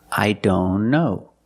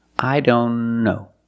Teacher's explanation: If you link the sounds, I don't know. Link the N with the other N.